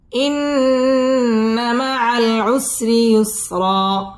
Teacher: إن مع العسر র বারিক হবে। عسري يسرا এখানে র এক আলিফ টান দিয়ে ওয়াকফ করতে হবে এবং র পুর হবে